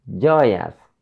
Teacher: So we should stress on the first syllable, joy.